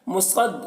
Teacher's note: صاد کو پر پڑھیں گے، صاد حروف مستعلیہ میں سے ہے۔